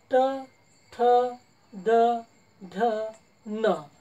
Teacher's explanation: जिभेचा मागील भाग खाली वाकवला जाते आणि समोरील शेंडा फक्त वरती आणि मुखातील वरील भागाला दातांच्या थोडा मागे स्पर्श करते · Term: मृदा